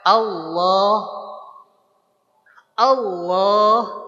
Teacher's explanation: Masih ingat pangkal lidah kita yang diangkat. Maka ketika kita mengucapkan lafaz Allah bukan dengan Allah, tapi tetap aja biasa si mulut kita biasa tanpa monyong. Pangkal lidah kita yang naik. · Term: tafkhim